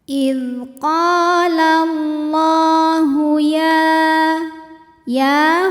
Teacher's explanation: Idz qala Allahu ya, hukumnya mad tabi'i muqaddar, sebab ya berharokat fathah panjang. Cara membacanya, ya dipanjangkan 2 harokat.